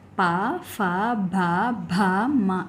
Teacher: పెదవు సహాయంతో పలకబడే అక్షరాలను ఓష్ట్యాలు అంటారు